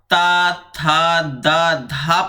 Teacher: आपकी जीभ जो है वह दांतों में टच होती है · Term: दंत वर्ण